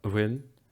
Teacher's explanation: this un is really unstressed, and so the N is often dropped. So you could have an bhfuil, or you could have a bhfuil.